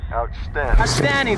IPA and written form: ˌaʊtˈstændɪŋ (Outstanding)